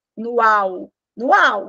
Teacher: se o som não passa pelo nariz é um encontro oral não é um encontro nasal